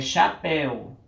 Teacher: Chapéu, o acento ele é oxítona, porque está no finalzinho